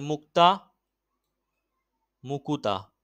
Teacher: দেখো মুক্তা, মুক্তা দেখো ব্যঞ্জন ধ্বনিটা কি, এই যে যুক্ত ব্যঞ্জনটাকে কি করা হয়েছে, যুক্ত ব্যঞ্জনটাকে উচ্চারণের সুবিধার জন্য ভেঙে দিয়েছে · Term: মধ্য স্বরাগম